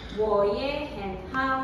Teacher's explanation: Everything becomes second tone except the last one.